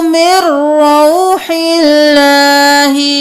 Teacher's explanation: نون کو نہیں پڑھنا میم کو رو کے ساتھ ملانا